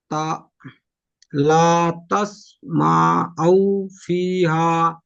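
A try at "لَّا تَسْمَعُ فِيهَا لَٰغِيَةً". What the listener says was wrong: লা তাসমাউ, এই দুটো টান হয়ে যাচ্ছে, টান হবে না। ফাই আজের ফি, একালি টান দিয়ে পড়বেন। হা আলিফ যাবার হা, একালি টান দিয়ে পড়বেন। লা তাসমাউ ফিহা লাগিয়া, লাগিয়া, লাম আলিফ যাবার লা, গয়েন সিরগি লাগি, ইয়া হা যাবার ইয়া, লাগিয়া। তাসমাউ, দেখে দেখে পড়তে হবে। লা তাসমাউ, তা পড়ছেন প্রথমে, প্রথমে লাম আছে, লাম আলিফ জবর লা,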